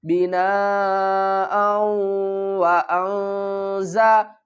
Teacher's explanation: اخفا، نون کی آواز کو چھپا کر پڑھیں گے